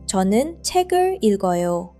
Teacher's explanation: Hear how the 을 leans right onto the end of 책.